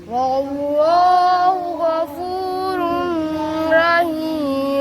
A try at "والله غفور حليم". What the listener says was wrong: क्या कह रहे हो रहीम किधर है गफूर हलीम